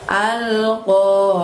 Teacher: Ahnya di situ pakai ain ya teman-teman ya. Kalau pakai ain maka bunyi suara hurufnya bersumber dari tenggorokan bagian tengah. Jadi tidak perlu membuka lebar pada mulut kita.